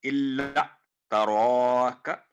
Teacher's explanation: رو پر کر کے موٹی آواز میں، کا باریک آواز میں